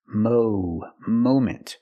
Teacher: we cannot use a short a sound like hot and stop and Mom we need the long o sound like no and go and phone Mo moment at the moment